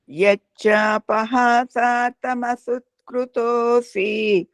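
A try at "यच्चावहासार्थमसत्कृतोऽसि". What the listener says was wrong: ಅಕಾರ ವಕಾರ ಅದು ಯಚ್ಚಾವಹಾಸಾರ್ಥಂ ಅಸತ್ಕೃತೋಸಿ ಯಚ್ಚಾಪ ಇಲ್ಲ ಪಕಾರ ಇದೆ ಅಲ್ಲಿ ಹೌದಾ ಯಚ್ಚಾವಹಾಸಾರ್ಥ ವಕಾರ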